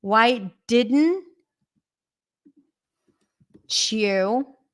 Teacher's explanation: a CH sound I'm going to write it why didn't you you don't even have to pronounce the Y